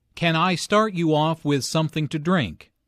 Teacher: Notice how the question starts with can. Since this is a yes-no question, the intonation rises at the end.